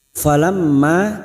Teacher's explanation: mim yang bertasdid, gunna musaddada, kita dengungkan dan ditahan selama 3 harokat